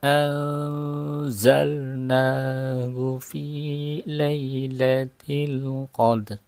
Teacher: bertemu dengan huruf Za Harus baca samar panjang Inna anzal jadi Nun matinya disamarkan langsung e persiapan lidah kita masuk dalam huruf Za